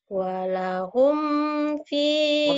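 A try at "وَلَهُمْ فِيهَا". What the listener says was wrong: idhan. Walahumnya idhan. Jangan karena lagu kamu walahum, jangan. Ini idhar, idhar Syafawi. Walahum ya.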